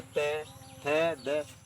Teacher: जब हम बोलते ते थे दे, तो हमारी जीभ दांतों से टकराती है। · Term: दंतीय व्यंजन